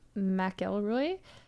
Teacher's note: if the stress is on the mick it will slightly sound like mac